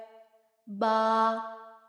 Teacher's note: बा दोनों होठों के तर हिस्से से